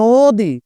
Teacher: নয়ের সাথে ওকার উচ্চারণ হবে, আর এই দীর্ঘ ইকার থাকার ক্ষমতা নেই